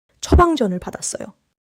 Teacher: Watch the liaison: 받았어요 sounds like 바다써요.